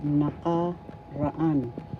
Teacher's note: First syllable na, second syllable ka, third syllable ka, fourth syllable an. The accent is in the fourth syllable